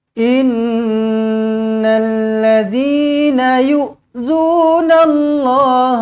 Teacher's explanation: Innal nun sabdu macam biasa, dengungkan 2 harakat, wajibul gunnah.